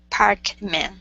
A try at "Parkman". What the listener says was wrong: so instead of meh, man, pronouncing that A, change it to mun, Parkman.